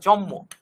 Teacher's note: অর্থাৎ যেটা আগে ছিল দন্তন্য যোগ মটা হয়ে গেছে কি সেটা হয়ে গেছে ম যোগ ম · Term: সমীভবন